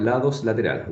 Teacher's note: you raise the tongue your tongue touches the alveolar Ridge but the air escapes through the sides of the tongue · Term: lateral